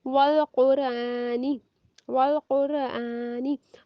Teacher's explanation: वाओ की मिसाल हो गई और वाओ पर होंठ गोल हुए।